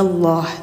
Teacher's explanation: Maka nanti bunyi lam yang ada pada lafaz Allah dibacanya tebal